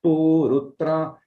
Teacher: So here we have the short vowel pu with the svarita pu, so it is purutra, yeah, and it is not, we have not holding so some takshara after this pu, so it becomes elongated in duration. So short vowel without holding in svarita becomes extended. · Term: extension in duration